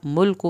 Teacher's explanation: मुल्कु पे काफ की पेश लंबी ना हो